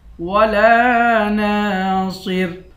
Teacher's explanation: صاد کو موٹا پڑھیں گے، آخر میں را ہے، اس را کو باریک کریں گے۔